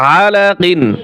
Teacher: আইন গলার ভিতরে চাপিয়ে বলতে হয় আলাকিন টান দিতে হবে না কোথাও এবং হরকতের উচ্চারণ তাড়াতাড়ি করিয়া